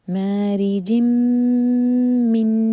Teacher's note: جیم کے نیچے کسرہ کی تنوین سلائڈنگ، اس کے بعد میم ہے تو یہاں پر بھی ادغام ہے غنہ کے ساتھ، میم کو ہولڈ کیا جائے گا